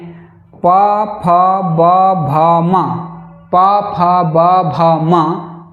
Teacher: प फ ब भ म प वर्ग और उकार ह्रस्व उकार और दीर्घ उकार और उपद माने विसर्ग का उच्चारण स्थान ओष्ठ है।